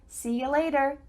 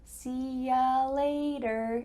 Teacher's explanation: a common reduction for see you later is see ya later the word you changes to ya